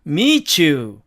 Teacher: 자, 그 다음에 두 번째로 t와 y가 만나면 발음 기호상으로는 t와 이 이러한 음이 되는데 t가 무성음인 까닭에 이가 영향을 받아서 실제로는 취에 매우 가까운 음이 되기 때문에 취로 발음이 됩니다